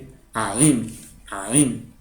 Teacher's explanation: Es como si fueras a pronunciar una A, pero con la garganta cerrada.